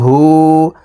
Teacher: পেশ আছে এই কারণে এই হাকে এক আলিফ টেনে পড়তে হবে ঠোঁট গোল করে এক আলিফ টেনে পড়তে হবে